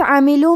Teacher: عاملوں میں عین کی ادائیگی حلق کے درمیان والے حصے سے ہے